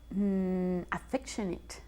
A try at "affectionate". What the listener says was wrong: Affectionate, muy bien.